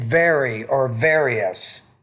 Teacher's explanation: When you use the word various, you need to pronounce that V with a little bit more vibration.